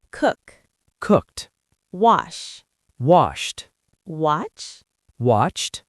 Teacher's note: We use the T sound when the verb ends in an unvoiced sound like K, P, S, sh. Sounds that don't vibrate your throat. · So for the past tense, the ED turns into a sharp T.